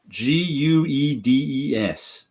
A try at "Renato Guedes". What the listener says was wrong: Geddes. The U is silent.